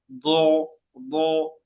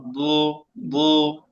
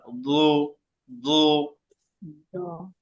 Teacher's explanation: জিহ্বার গোড়ার কিনারা, উপরের মাড়ির দাঁতের গোড়া। দো, দো, ভিতর থেকে নিয়ে আসতে হবে, গোড়া থেকে।